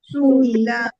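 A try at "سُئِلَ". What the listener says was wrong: No stretching over here. It is not su'ila. It is su'ila.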